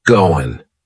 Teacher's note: That final G in the word going is going to be cut off, and we'll just say, going.